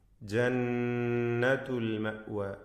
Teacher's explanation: നൂൻ മുഷദ്ദദ, ഷദ് നൽകപ്പെട്ട നൂനിനെ 2 ഹറക്കത്തിൻ്റെ അളവിൽ മണിക്കണം